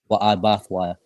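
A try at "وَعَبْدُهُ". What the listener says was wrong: So not I bath, but I bad.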